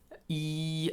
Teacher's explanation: i is actually the e sound e and it is the it is the furthest forward and the furthest North in the mouth your tongue is pressed almost right up against the top teeth